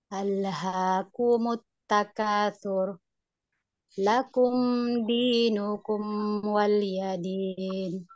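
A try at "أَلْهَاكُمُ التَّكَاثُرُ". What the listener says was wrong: Sip, mantap.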